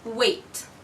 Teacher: wait ends with the sound T and T is a voiceless sound therefore we are going to choose the voiceless for the S